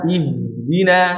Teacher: Lemahnya suara H karena berlebihan dalam merenggangkan kedua pita suara.